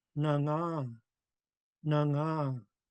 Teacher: the G's can be silent because of the NG blend